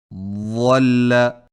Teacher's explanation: ضاد کی آواز خوب موٹی اور درازی والی ہوتی ہے